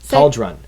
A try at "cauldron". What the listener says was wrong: There's no T in the word cauldron. Why do you keep saying cauldron? That's not a word. Cauldron.